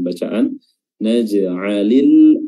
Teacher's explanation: Qalqalah kecil karena berada di pertengahan bacaan